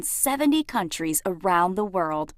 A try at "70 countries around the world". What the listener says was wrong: choppy, like when she pauses before around the world. 70 countries around the world, when it should be 70 countries around the world. So she's pushing her voice a little bit. It's a little too hard, right? It's a little forced. It's a little announcerish.